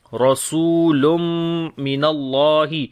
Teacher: رسول، را کو موٹا پڑھیں گے، سین کو لمبا کریں گے، واو مدہ ہے اور لام کے اوپر تنوین ہے، اس کے بعد میم آ گیا، ادغام غنے کے ساتھ کریں گے۔ رسول من اللہ، اللہ کے نام کو موٹا پڑھیں گے، اس سے پہلے زبر آ گئی اور لمبا بھی کریں گے۔